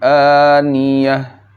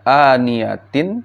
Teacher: ketika waqf atau berhenti, ta marbutah (ingat ini) berubah menjadi sukun, ha yang diam atau mati. Ta marbutah ini menjadi ha yang senyap atau mati , aniyatin dibaca, jika berhenti, sebagai aniyah.